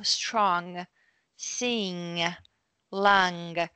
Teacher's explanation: strong with this symbol right we do that with your throat the throat kind of closes and the tongue raises at the back